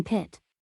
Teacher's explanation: describes a voiceless stop produced with a puff of air that results when the vocal cords remain open for a brief period after the release of the stop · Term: aspirated